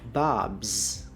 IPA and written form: bɑbz (Bob's)